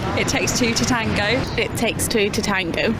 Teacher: the two t sounds join together to create one slightly stronger t.